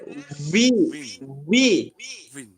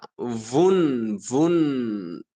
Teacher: উপরের সামনের উপরের দাঁতগুলো নিচের ঠোঁটের মধ্যখানে লাগাইয়া